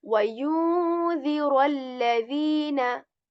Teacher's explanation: So whenever there's going to be any letter except the other letters which includes za as well, we are going to do what we are going to do is that we are going to hide, we are going to then we conceal or hide the n sound and stay for a bit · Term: ikhfa